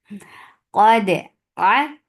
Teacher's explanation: Dal is majhura letter. There is no flow of breath. So the qalqala will be very nice and crisp.